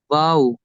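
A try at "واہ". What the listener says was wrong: वाह वाह वाह, ओ नहीं है। ओ की साउंड क्यों आएगी? तो ये है व के बाद अलिफ वाह, और बाद में ह, वाह। जैसे हम बोलते हैं ना वाह, तो ये वही वाह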